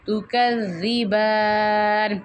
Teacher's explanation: جو با کی ادائیگی ہے یہ ہونٹوں کے گیلے حصے سے ہوتی ہے تو ہونٹوں کے گیلے حصے کو ملا کے پھر آپ نے پڑھنا ہے.